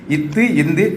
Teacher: நாவின் நுனி, மேல்வாய் பல்லின் அடி.